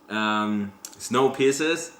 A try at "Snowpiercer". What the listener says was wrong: Singular. You said piercers.